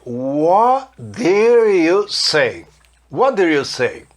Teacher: Não falei o som do T do what, porque depois vem um som de D no did. Se eu falasse what did, ia ficar what did, parecendo um japonês ou um chinês falando. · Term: matar o som do T